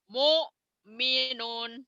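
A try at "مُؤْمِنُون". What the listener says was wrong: Mu'minun. Neken ya, diteken ya. Mu'minun. Kurang. Kurang penekanannya. Mu'minun.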